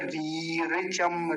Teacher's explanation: पहली लंबी बोली जाएगी दूसरी जल्दी बोली जाएगी